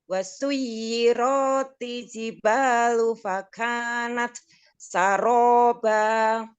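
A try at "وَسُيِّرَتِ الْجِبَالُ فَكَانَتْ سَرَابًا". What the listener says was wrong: Roknya jangan dipanjangkan, tidak ada matobi'i. Wasuyiratil jibalu. Wasuyiratil. Roknya jangan dipanjangkan ya.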